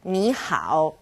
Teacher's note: two third tones turn into second and third